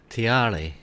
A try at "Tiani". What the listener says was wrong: No, Tiari's ain't got an R. This is an N-I. Tiani. This is Tiani rather than Tiare.